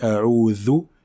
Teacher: Ensuite, nous avons la lettre dhal. La lettre dhal sort par le contact de l'extrémité de la langue avec l'extrémité des incisives supérieures. Donc, on sort le bout de la langue lorsqu'on prononce le dhal. · on sort le bout de la langue lorsqu'on prononce le dhal. Lorsqu'on dit a'udhu, il faut sortir un peu le bout de sa langue.